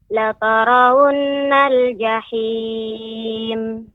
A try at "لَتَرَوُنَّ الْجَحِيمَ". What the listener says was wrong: Nun bertasydid, lebih diberi jeda, lebih diberi tempo, bukan jeda. Tempo dalam pengucapan nun bertasydid agak lebih sedikit lama. La tarawunnal jahim.